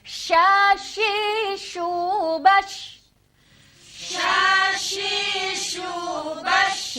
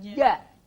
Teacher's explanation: Nah, sekarang yang kedua, sama-sama tengah lidahnya, tetapi posisi makhrajnya beda, yaitu ja. Kalau sya tadi itu terjadi gesekan udara, tetapi kalau ja itu terjadi penekanan. Maka sifat ja saat kita sukun itu adalah sifat syiddah.